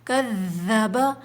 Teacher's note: وال پہ تشدید ہے، سختی کے ساتھ تھوڑا رکیں گے